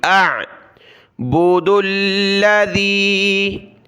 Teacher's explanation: حمزہ کو عین کے ساتھ ملایا، حمزہ کی آواز آئے پھر عین کی